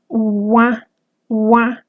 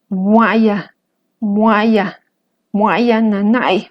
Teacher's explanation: pronunciar una U, pero que salga aire por mi nariz, uá, uá. Este sonido lo encontramos en el disde en palabras como muaya, muaya, muaya nanay, hace mucho calor, o muaya nachich, hace mucho frío.